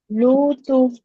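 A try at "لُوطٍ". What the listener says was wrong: लाम को और ज्यादा खींचो।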